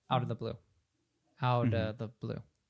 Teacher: Blue is the only word that gets emphasized there. It's the only content word.